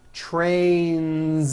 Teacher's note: two trains with a voiced Z ending